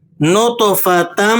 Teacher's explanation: یہاں پر جب آپ تا کو میم سے ملائیں گے تو غنہ بھی ادا کریں گے۔ نطفتم، تو غنہ ادا کرنے سے دونوں باتیں مکمل ہو جائیں گی، غنہ بھی ادا ہو جائے گا اور تشدید والی سختی بھی ادا ہو جائے گی۔